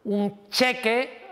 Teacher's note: Si digo un cheque, ahora la N se está haciendo palatal